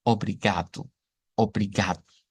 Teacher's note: Tengo que cambiar el sonido de la O por una u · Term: acento portugués